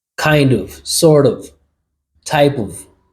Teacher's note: Of becomes v, kind of, sort of, type of. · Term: reductions